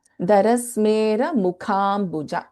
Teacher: In Mukha, Kha is Mahaprana.